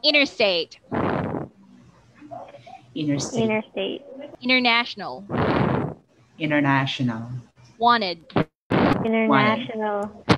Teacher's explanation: when T comes after N, the T is dropped in many words. So, not all, but many words. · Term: silent T